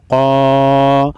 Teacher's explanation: خالی الف سے پہلے زبر ہے، 1 الف کے مقدار یعنی الف مدہ ہے